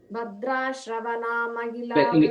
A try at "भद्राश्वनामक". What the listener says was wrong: Again you said Shrava, you said no. Bhadrashva.